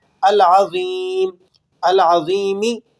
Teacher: میم زیر می تھا لیکن وقف کرنے کی وجہ سے میم ساکن ہو گیا